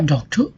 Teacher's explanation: the word a doctor, and the stress falls on the doc. Okay? It means that the first syllable has the high emphasis.